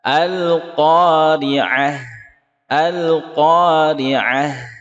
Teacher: Waqafnya dengan hak sukun. Maka haknya mengalir, dialirkan, tidak berhenti.